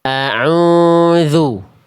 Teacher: Suara teman-teman itu berdengung masuk ke rongga hidung. Seharusnya ain itu suaranya masuk bukan ke rongga hidung, dari tengah tenggorokan jalurnya masuk ke rongga mulut. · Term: sengau